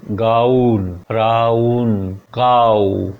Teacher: आऊ, आ और ऊ की साउंड। गाउन जब आप बोलते हो तो उसमें दो साउंड होती है, गा फिर ऊ